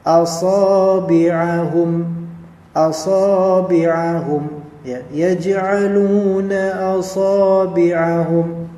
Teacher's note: sad di sini fathah ketemu dengan alif, maka dia menjadi mad tabi'i dua harakat